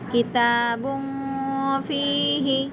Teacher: با کے اوپر دو پیش کی تنوین ہے اور تنوین کے بعد حروف اقفا میں سے فا آیا ہے، اس لیے نون کی آواز کو ناک میں چھپا کر پڑھیں گے